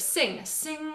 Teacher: you'll actually feel the tongue at the back is connected to the roof of your mouth or the soft palate